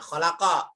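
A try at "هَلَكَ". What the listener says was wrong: Halako ya, bukan kho. Halako. Pakai H itu berarti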